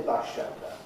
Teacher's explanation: the S at the end of bus becomes an esh to match up to the esh that begins the word shelter